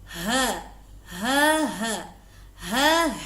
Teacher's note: Sempurnakan makhrajul huruf ha dengan baik tenggorokan bagian bawah.